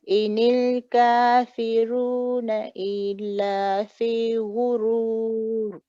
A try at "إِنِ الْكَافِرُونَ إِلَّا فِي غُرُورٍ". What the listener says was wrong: Better, alhamdulillah. Your ra can be a little bit heavier. Okay, so just make that extra, when you're saying, for example, ra, ri, ru, al-kafiruna.